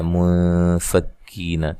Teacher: یہاں نون ساکن کا اخفا ہو رہا ہے، غنے کے ساتھ باریک اخفا ہے